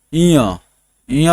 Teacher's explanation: हवा जो है मुख के साथ साथ नाक से भी निकलती है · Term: अनुनासिक